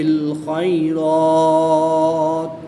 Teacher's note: وقف کی حالت میں مد عارض ہوگی. 2 سے 3 الف تک کھینچ کر پڑھیں گے